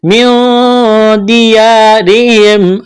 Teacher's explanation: واخرجوا خا کو موٹا کرنا ہے، را کو باریک کرنا ہے، را کے نیچے زیر ہے، واو مدہ ہے، ایک الف کے برابر کھینچنا ہے. نون ساکن کے بعد دال ہے، اخفا کریں گے، آواز ناک میں چھپائیں گے